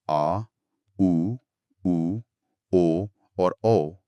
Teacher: पश्च स्वर जो जीभ के पिछले हिस्से से बोले जाते हैं।